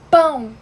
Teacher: Quando vocês falam pão, vocês veem que vocês tipo seguram o ar quando falam P. Isso seria obstrução de ar, que no caso seria a consoante, que é justamente o P.